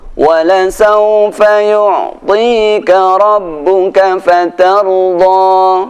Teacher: tidak ada hamzah setelah fatarda, tidak ada tasydid, maka fatarda cukup 2 harokat